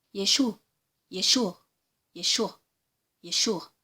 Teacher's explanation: C'est quelque chose qui vient du fond de la gorge. Vous n'entendez pas de A bien prononcé. Vous entendez juste un petit son léger qui sort du fond de la gorge. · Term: Aïn